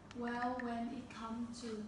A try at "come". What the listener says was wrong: Come là ngắn thôi.